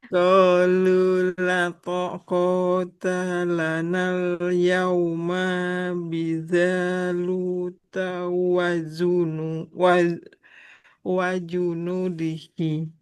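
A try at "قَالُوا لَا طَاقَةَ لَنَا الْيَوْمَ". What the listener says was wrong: lato kota taknya nggak boleh panjang. Lanal yauma. Nah, di sini juga nggak boleh panjang mimnya. Qafnya panjang karena ada huruf matnya. Lamnya panjang karena ada huruf matnya.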